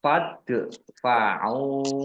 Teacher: Dal sukun bacaan kolkolah dibaca memantul, ditampakkan pantulannya.